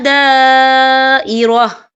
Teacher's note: اور آگے دیکھیں دائرہ، یہاں خالف سے پہلے زبر ہے اور اس میں مد بھی ہے. یہ مد جو ہے مد متصل ہے، اس کی مقدار 4 حرکت کے برابر ہے تو ہم اسے 4 حرکت کے برابر کھینچ کے پڑھیں گے